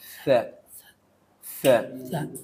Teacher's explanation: lidahnya harus nempel ke gigi bagian atas